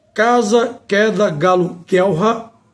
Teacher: Posterior da língua, contra o véu palatino, são as velares